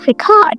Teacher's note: When you say record stress on the second syllable, it's an action.